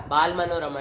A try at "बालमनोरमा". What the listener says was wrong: तुम क्या नाक में से बोल रहे हो? आधा अधूरा अंड संट बोल देते हो।